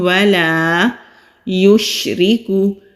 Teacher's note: شین کی آواز منہ میں پھیلتی ہوئی باریک پڑھیں گے، کاف کے اوپر پیش ہے۔ · لام کے اوپر زبر ہے، خالی الف سے پہلے زبر، تو الف مدہ ہے، ایک الف کے برابر کھینچ کر پڑھیں گے۔